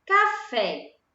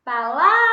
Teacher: Qual é a sílaba mais forte de café? O fé. Se o fé é a sílaba mais forte, né, ela é a sílaba tônica.